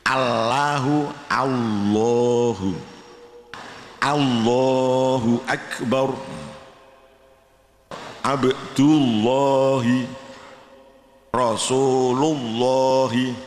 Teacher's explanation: lidahnya harus nempel pada gusi, lah suaranya ditebalkan seakan-akan baca wawu tapi lidahnya nempel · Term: lam jalalah